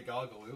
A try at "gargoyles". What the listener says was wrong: You're saying gargles instead of gargoyles.